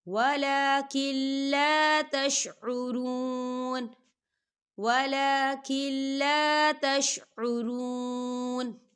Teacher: دیکھیں ولکن لا، یہاں دیکھیں نون ساکن ہے اور نون ساکن کے بعد لام آ رہا ہے. لام جو ہے حروف یرملون میں سے ہے، تو یہاں پر ادغام ہوگا لیکن بنا غننے کے ہوگا، تو یہاں غنہ نہیں کریں گے.